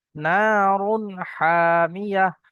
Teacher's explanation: তানবিনের পরে হা এসছে হরফে হালকি 6টি অক্ষরের মধ্যে থেকে এখানে হা এসছে তাই গুন্না হবে না নারুন হামিয়া, হা টান হবে আলিফ মাদ্দা।